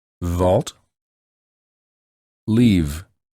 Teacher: To produce these two sounds, the lower lips lightly touch the upper teeth and a vibration occurs on the lips from the flow of the air created.